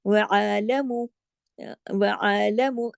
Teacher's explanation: عین کو جماؤ کے ساتھ پڑھنا ہے واضح ترین